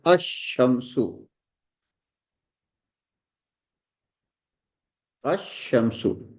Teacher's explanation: When this definite article alif lam we prefix to a noun beginning with the solar letter, So lam of alif lam is assimilated to the solar letter.